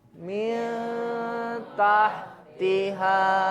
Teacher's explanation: maka bunyi nun dibaca samar dengan dengung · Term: ikhfa hakiki